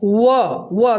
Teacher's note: व देखिए बोलने पे लग रहा है व दंतोष्ठ, दांत और ओठ दोनों का सहारा ले रहा है